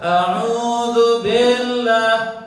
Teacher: A'udzu billah, memanjangkan ba. Tujuannya mungkin bagus, ingin masuk ke tasydid tapi salah.